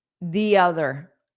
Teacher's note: I pronounced it more of a longer the, which native speakers do not always do